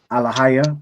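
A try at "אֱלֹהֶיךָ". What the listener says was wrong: and then the last word, the last letter. right here is a ka at the end of a word. Alahayaka, which again means your power, right? So we have Alahayaka.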